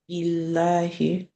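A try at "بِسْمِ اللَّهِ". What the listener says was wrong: billahi, because ba kasru comes before the word Allah. So, and it is heavy, tafkhim, pronounced with a full mouth when the preceding letter has a fatha or dhamma.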